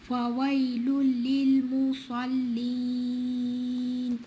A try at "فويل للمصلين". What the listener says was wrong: للمصلين. Don't stretch the meme. Make it shorter. فويل للمصلين.